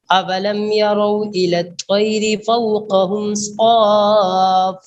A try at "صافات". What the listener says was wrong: لمبی مد ہے، صاف، طول ہے اس میں،